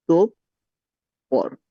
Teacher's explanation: বিসর্গের পরে আছে প, পটা পরপর দুইবার উচ্চারিত হচ্ছে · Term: দ্বিত্ব উচ্চারণ